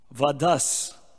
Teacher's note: Because there's a visarga at the end of the D, it merges with the S. Actually, there's no break, but we make a break for ease of pronunciation. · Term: sandhi